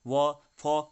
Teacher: वो फो का उच्चारण स्थल क्या है, दंतोष्ठ, ठीक है, यानी कि दंतोष्ठ, दांत और ओष्ठ